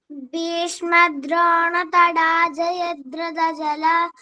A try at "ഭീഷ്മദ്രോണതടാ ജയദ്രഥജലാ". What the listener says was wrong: നേരത്തെ ജലഹ എന്ന് പറഞ്ഞു. അതുകൊണ്ടാണ് ഞാൻ പറഞ്ഞത് കേട്ടോ.